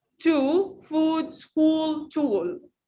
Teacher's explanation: Laps will be rounded, circle, tense. Tongue high, tense and back.